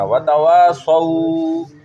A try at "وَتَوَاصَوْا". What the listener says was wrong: سو نہیں بولنا، سو نہیں، سو نہیں. سواد واو زبر سو. وتواصوا.